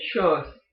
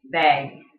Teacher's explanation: The Southern accent draws them out flat. The Yooper accent makes them more rounded.